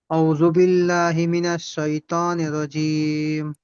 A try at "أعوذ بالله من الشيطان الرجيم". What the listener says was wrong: আউযু বিল্লাহ, একটু আউ বলতে পারলে সহজ হতো এবং স্পষ্ট হয়ে যেত। আউ